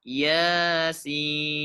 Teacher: pada kata Yasin huruf ya dibaca 2 harokat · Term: mad tabi'i harfi